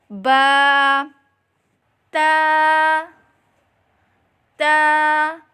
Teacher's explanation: जुबान की नोक और ऊपर के दांतों की जड़ से अदा करें